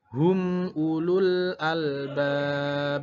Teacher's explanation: terakhir albab itu juga qalqalah kubro. Jadi harus dipantulkan.